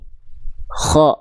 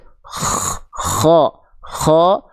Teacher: huruf kho itu dilafalkan dari tenggorokan paling luar